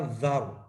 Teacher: اب دیکھیں یہ جو ذال کے اوپر تنوین ہے، اس تنوین کے بعد تھی را، تو ہم نے پڑھا ذر، تنوین کو ختم کر دیا، تنوین کی ساری آواز کو ہم نے را میں داخل کر دیا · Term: ادغام تام